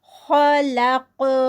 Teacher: خلق، خا ہیوی، قاف ہیوی، اور لام بیچ میں لائٹ ہے، خلق، اگر ہم اس کو ایسے پڑھیں تو، اور جب یہ سٹاپ پہ آ گیا ہے تو قاف پہ قلقلہ آئے گا